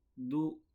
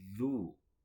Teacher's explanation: Zal itu tempat keluarnya dari ujung lidah. Ini ujung lidah, ini lidah, ini ujung lidah bertemu dengan ujung gigi seri bagian atas.